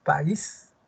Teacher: Un alumnito me decía esto, fue una alumna. Profesor, si separo país, tiene dos sílabas. El acento está en is